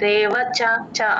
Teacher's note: చ కి దీర్ఘం పెట్టకూడదు కట్ చేయాలి